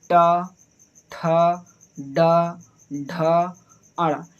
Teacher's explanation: हमारी जिह्वा जो हो रही है थोड़ी सी मुड़ जा रही है। देखें ट एक बार मुड़ेगी फिर सीधे सीधे हो जाएगी। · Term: टा वर्ग